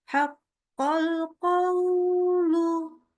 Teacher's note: Nah, ini kepanjangan. Ya, jadi kepanjangan di wawu sukunnya.